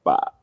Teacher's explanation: third tone is bass voice just start your voice super low like bah super short